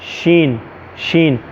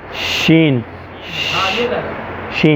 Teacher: ज़बान का दरमियाना हिस्सा जो है वो ऊपर वाले बिल्कुल ऊपर तालू से लग रहा है, हल्का सा लग रहा है, हल्की सी ज़बान लग रही है, किनारा नहीं लग रहा, बीच वाला हिस्सा।